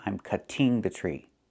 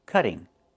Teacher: It's pronounced cutting. Move the stress to the first syllable.